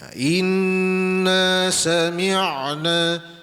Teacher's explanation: Ayat yang pertama tadi iaitu rafa'ain sakinah ataupun ain sukun tu. Jadi bunyi ain mati dia tidak terputus ya bunyinya.